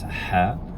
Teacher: there's ha which is in the back of the throat